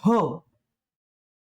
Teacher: आपलं महाप्राण वर्ण आहे ह, तर याचा उच्चार सुद्धा आपला कंठातून होतो